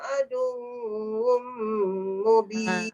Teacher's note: Adu tu dal kepada waw tu tak dengung. Yang dengungnya wum tu.